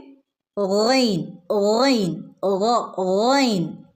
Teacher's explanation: വരുന്നത് റൈൻ റൈൻ തൊണ്ടയുടെ വായോട് അടുത്ത ഭാഗം തൊണ്ടയുടെ മുകൾ ഭാഗം അപ്പം തൊണ്ടയുടെ മുകൾ ഭാഗം എന്ന് പറഞ്ഞാൽ വായോട് അടുത്ത് വരുന്ന ഭാഗം അവിടെ നിന്നാണ് റൈൻ